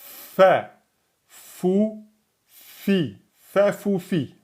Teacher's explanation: on a les incisives supérieures qui touchent la lèvre inférieure. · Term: lettre FAIR